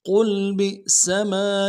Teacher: قل میں قوف کو موٹا کرنا ہے، لام کے ساتھ ملائیں گے، قوف موٹا پڑھیں گے